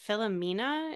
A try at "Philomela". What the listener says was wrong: Philomela, I believe. It's with an L and not an N. Philomela, yeah.